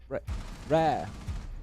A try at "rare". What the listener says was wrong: Say rare. Just rare. It's not emphasising, mate. It's inserting syllables where they don't belong.